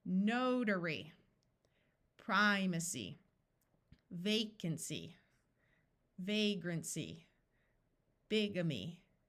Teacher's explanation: These Y's are not in accented syllables, so they are going to have the long E sound.